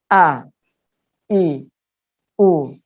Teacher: Jadi menutup dulu, pita suara kita tutup dulu, baru dibacakan A, I, U gitu. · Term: hamzah